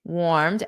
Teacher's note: D warmed with a soft d. warmed and it doesn't add an extra syllable.